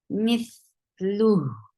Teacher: And there be kasra on mith. For kasra, give e sound and then attach with tha. Tha will get sifa of rakhawa, and it is light. Mithlu. For dhamma, circle your lip.